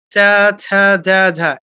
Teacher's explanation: একই স্থান তালুতে ঘষা দিয়ে নামছে। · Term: চ বর্গের